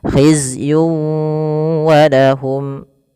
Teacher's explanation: Maka cara membacanya masukkan tanwin kepada huruf wau. Tidak lagi hizyun walahum tapi langsung wau.